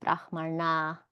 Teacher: Brahmana, because of the ra, makes all of these nas cerebral nas.